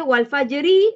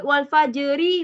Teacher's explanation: Kalau kita menyebut wal fajri memang ra tarkik nipis, tetapi bila kita waqaf di situ matikan ra sebelumnya pula mati.